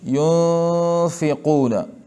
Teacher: اخفا به کېږي، اواز به ټول خیشوم ته ځي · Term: اخفا مع الغنه